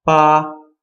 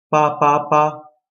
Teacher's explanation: So the number 8 is the sound pa. It's B-A, high level pitch, 1st tone